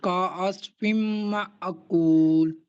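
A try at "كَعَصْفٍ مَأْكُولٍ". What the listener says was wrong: Very good. एक बार फिर पढ़ें।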